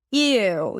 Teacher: You hear the tongue actually going up creating that ooh sound.